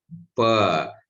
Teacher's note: Pa is bilabial, plosive, voiceless.